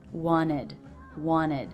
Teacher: Even though I dropped the T, the ED ending still follows the rule for a word that ends in T or D and is pronounced with the I as in sit vowel and the D consonant